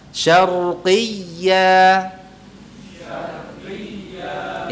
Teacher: jangan dipanjangkan atau diayunkan qinya